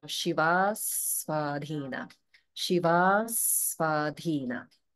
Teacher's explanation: And then again, Shiva Svadhina. So even though they're two separate words, they're still holding after dirgha because the Sva is coming after the A in Shiva.